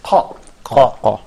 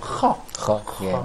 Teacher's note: both of them have the same place of articulation, which is uvular. So I can say confidently that is ha is a voiceless, and also it's produced by the uvular part of.